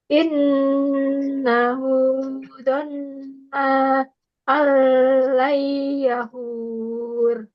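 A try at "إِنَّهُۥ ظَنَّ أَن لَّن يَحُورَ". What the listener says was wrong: Ini kurang ditahan ya. Karena memang membutuhkan nafas agak sedikit panjang. Karena banyak yang ditahan.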